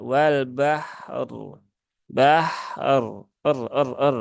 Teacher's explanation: harakat kasrahnya Tetapi dia dilihat berhubungan dengan ini ya harakat fathah maka ketika waqaf dia rnya dibaca dengan tafkhim ya atau tebal · Maka ketika wakof, dia roknya dibaca dengan tafkhim ya atau tebal ya.